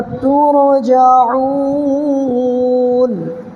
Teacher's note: زبر کو نہیں پڑھنا ہے، نون پر ساکن دے دینا ہے